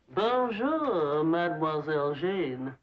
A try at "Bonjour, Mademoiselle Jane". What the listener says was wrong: That's very good, except for the mwah sound. Must be soft.